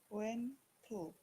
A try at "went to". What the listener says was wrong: Went to, very good.